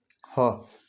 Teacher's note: ह का उच्चारण स्थान भी कंठ होता है